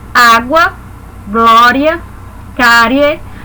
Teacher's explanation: começa do som mais fraco e vai até o som mais forte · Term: ditongos